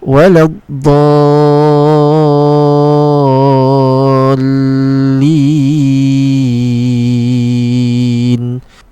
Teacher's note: So the correct way to read this is to read the dot with a 6 harakah, the idgham, which is the l sound, to be 2 harakah, and the lin, which is the mad li sukun, should be 6 count. So it should be read like this: waladhdallin. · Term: mad lazim kilmi muthaqal